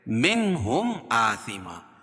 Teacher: نون ساکن کے بعد حروف حلقی کے 6 حرفوں میں سے ہا ہے تو یہاں اظہار ہوگا، اس کو ظاہر کر کے پڑھیں گے